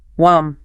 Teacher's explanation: So want me connects as wam. Right, no hard T sound is heard. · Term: flat T